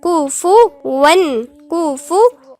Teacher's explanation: كتير بنغلط فيها ان احنا الفاء بنسكنها، لا هنضم الفاء هنا مضمومة